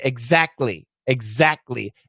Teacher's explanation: you can actually uh do the k and the t stop sounds together at the same time and immediately go to the l